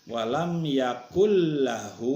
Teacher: Suara nunnya, yakunnya dilebur dimasukkan ke suara lam, bukan dibaca yakun lagi, tapi yakullahu, tapi tidak dengan gunah, tidak dengan dengung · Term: idgham bila guna